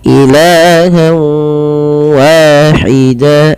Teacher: Apa yang dimasukkan adalah bunyi suara nun kepada bunyi wau. Awalnya ilahan wahida karena kita masukkan menjadi ilaha. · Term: idgham ghunah, idgham bi gunnah